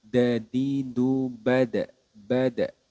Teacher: kalau huruf Dal yang tidak ada titiknya itu adalah sifatnya syiddah atau tertahannya suara